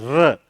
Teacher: र को लुंठित, प्रकंपित या कंपन जात 3 नामों से जाना जाता है। र जब बोलते हैं र, तो जीभ लुढ़कती है कहीं ना कहीं, लुंठित।